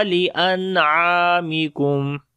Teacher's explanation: Mata'al lakum wa li'an'amikum. After the noon sakin there is ain. We make izhar, like the clear sound of noon sakin. And ain we long due to alif madda is there.